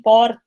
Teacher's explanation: É um R que vibra no dente. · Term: R paulista